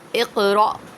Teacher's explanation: جب حمزہ ساکنہ ہوگا تو حمزہ کو جھٹکا دے کر پڑھیں گے